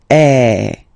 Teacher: So it's really open. I mean, the sound is really open, and normally your mouth should be opened a little bit more than with the accent aigu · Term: open one